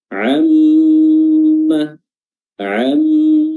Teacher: yang tentunya ee tasdidnya ini berbeda dengan tasdid huruf-huruf yang lain mimnya yang bertasdid di sini harus diberikan durasi lebih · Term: mim bertasdid